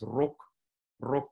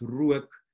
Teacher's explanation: In the mid vowels, it's no longer a length contrast, but rather a quality contrast. So what used to be a vowel length contrast in Dutch changed in Afrikaans to a short vowel and a diphthong, right? So it's no longer just a short and a long vowel.